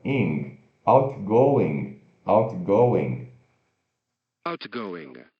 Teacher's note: E curto o N que trava no céu da boca.